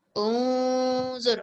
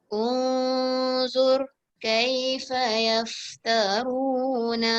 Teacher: Okey, sekarang ni nun dia pula tak ada sukun. Maksudnya kita harus dengungkan nun dia dengan za dia. Okey, disamarkan.